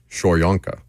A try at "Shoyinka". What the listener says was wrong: Why is it Shoyinka? Shoyinka. It's spelled Yinka. You're saying it like it's Yonka.